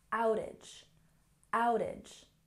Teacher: outage has stress on the first syllable